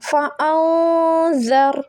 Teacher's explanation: نون کی آواز کو چھپا کر پڑھیں گے اور غنہ بھی کیا جائے گا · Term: اخفا